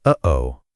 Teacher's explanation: A glottle stop is a sound made by briefly closing the vocal cords, stopping the airflow, and then releasing it. It's like a tiny catch or a momentary silence in your throat.